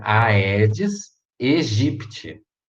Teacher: Agora o segundo AE é um ditongo, ele é junto.